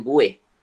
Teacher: ada penyisipan geluncuran separuh vokal. iaitu W